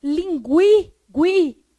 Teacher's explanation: nessa palavra linguiça, como o U é pronunciado, ele tem 2 fonemas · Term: ditongo crescente